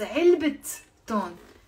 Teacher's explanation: when I want to say a box of or a can of something, I have to pronounce the تي مربوطة. We call this grammatically the إضافة.